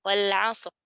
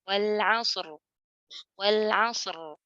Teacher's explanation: kita baca dengan izhar alias kita jelaskan kedua hurufnya. Jadi kebanyakan kesalahan orang karena kesulitan, ya ada iltiqa sakinin di sini, ada duanya bertemu huruf sukun di sini, akhirnya huruf shadnya saja yang jelas ra-nya hilang.